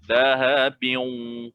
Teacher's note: memasukkan idgham. Lahabiyun, serentak, masuk dan dengung itu serentak.